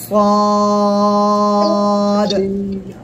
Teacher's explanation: জিহ্বার আগা, সামনে নিচে 2 দাঁতের পেট ও আগার সঙ্গে লাগাবেন, লাগিয়ে উচ্চারণ করবেন মোটা আওয়াজে